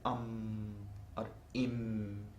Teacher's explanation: there the mouth remains closed and the air releases only through the nose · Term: anuswara